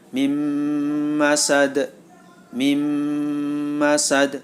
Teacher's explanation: disebut bacaan Idgham Bighunnah karena ada nun sukun bertemu dengan mim maka suara Nun masuk ke dalam huruf mim